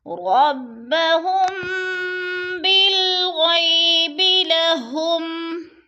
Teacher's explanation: ربهم پہ اخفاء شفوی ہو رہا ہے، میم ساکن کے بعد با آ گیا ہے تو ادھر اخفاء کریں گے